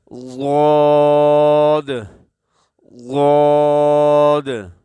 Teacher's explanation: اکثر جو ادا ہوتا ہے یہ حرف وہ آپ کے زبان کا بایاں کنارہ اوپر کے داڑھوں کے ساتھ لگتی ہے، تو یہ ضاد ادا ہوتا ہے۔